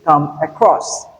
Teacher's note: Across is stressed whereas come is unstressed. This is only applicable to phrasal verbs and not in other situations.